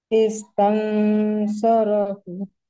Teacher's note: Dengungnya, huruf nunnya, nun sukunnya itu harus tebal